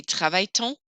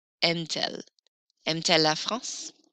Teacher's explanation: put a little T in there to split up those vowel sounds